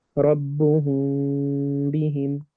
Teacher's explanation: you don't press your lips all the way together to make ربهم بهم. You simply put them on top of each other without pressing hard.